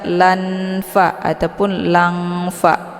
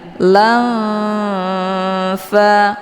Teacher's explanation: harokat tanwin fathahnya disamarkan, kemudian siap-siap menuju ke huruf fa. Lam fa, jadi jangan dibaca lan fa ataupun lang fa, itu bacaan yang salah, tapi disamarkan tanwinnya. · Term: ikhfa awsat